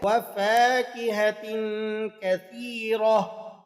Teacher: جب ہم یہاں وقف کرتے ہیں تو وقف کی حالت میں یہ گول تا ہا بن جاتی ہے، تو آپ نے اسے وقف کی حالت میں کثیرت پڑھ کر ادا نہیں کرنا، بلکہ آپ نے اس کو ادا کرنا ہے وَفَاكِهَةٍ كَثِيرَةٍ۔